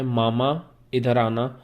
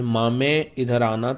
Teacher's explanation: آپ اسے یائے مجہول یعنی بڑی یہ کے ساتھ چینج کر دیتے ہیں، تو اس تبدیلی کو ہم امالہ کہتے ہیں، اور اس کی وجہ سے آواز میں بھی تبدیلی آ جاتی ہے۔